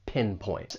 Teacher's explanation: And I'd also like to point out that final T. It's really a stop T. It's pretty subtle.